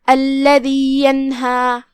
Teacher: کلمت الذی میں یہاں لام پہ تشدید ہے لہذا ہم 2 حرف کی مقدار میں لام کو پڑھیں گے اور تشدید کو ظاہر کریں گے. پھر حرف الدال ہے جو کہ اس کی ادائیگی زبان کے سر اور اوپر والے دانتوں کے اندرونی کناروں سے ہے تو ہم دال کو وہیں سے پڑھیں گے.